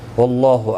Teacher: اللہ کا لام زبر کی وجہ سے پر پڑا جائے گا